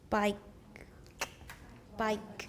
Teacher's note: of words in English, particularly in sentence final position. You might notice this in words such as bike with a glottal stop accompanying the final k. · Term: ejective